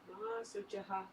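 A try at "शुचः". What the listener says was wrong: Shuchaha. Yeah, not sa sh. Shucha. There's not a lot of words in English where we're doing sh followed by ch. Yeah, shucha. But in Sanskrit you find that a lot.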